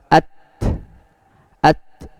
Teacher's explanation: Salah satu sifatnya yaitu syiddah. Kemudian setelah menyempurnakan sifat syiddah, baru memenuhi hak sifat yang berikutnya yaitu sifat hamas. Maka nafasnya dikeluarkan. At. Jadi nggak langsung masuk ke hamas. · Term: huruf ta